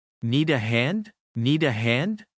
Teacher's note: notice you do the rising intonation to make it sound like a question